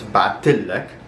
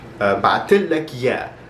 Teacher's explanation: I guess I should just mention here that, so bat is to send, but because there's another T for the past tense, they kind of get combined and it's sort of just emphasized with the shadda